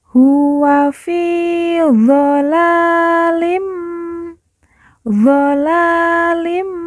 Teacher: fi kita baca panjang dua harakat karena di depannya terdapat huruf Ya Sukun yang merupakan tanda baca panjang dua harakat huwa fialim doalim la